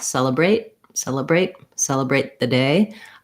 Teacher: I use this to show you that in a lot of words that end with T, we don't really say celebrate. With the pronounced T, we just let that sound stop in the mouth.